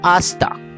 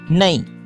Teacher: कलकतिया उर्दू में हे आवाज़ की तरफ रुझान कम है। अक्सर अल्फाज हे के बग़ैर तलफ़ुज़ किए जाते हैं, जैसे आहिस्ता से आस्ता, नहीं से नई वगैरह।